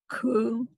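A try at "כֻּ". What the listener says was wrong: No, not ku. It's a chaf. Chu. That's that guttural.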